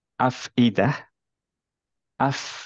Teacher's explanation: ফা যেহেতু হামস letter এইটার বাতাসটা বের হবে